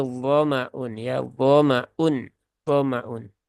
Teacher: Jadi jangan dibaca panjang mimnya